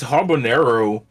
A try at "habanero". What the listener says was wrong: I'm just sorry to correct you here, but it's not habanero. It's pronounced habanero. The H is silent.